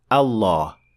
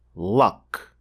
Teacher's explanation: it will be a full mouth lamb or as we call it in English the dark l